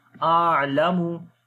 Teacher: On the ayn we make tawassut quality